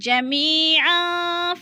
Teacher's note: پہلے میم کے نیچے زیر ہے تو ادھر یا مدہ ہے، یا مدہ کو ہم نے 1 الف 2 حرکات کے برابر لمبا کر کے پڑھنا ہے